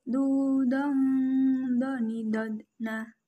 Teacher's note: huruf do menebalkan suara dengan mengangkat posisi pangkal lidah dan lidah bagian depan menutup bagian langit-langit